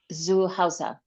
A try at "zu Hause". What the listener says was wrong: Except, well, let's say the only flaw is your Z. It's zu Hause. Zu.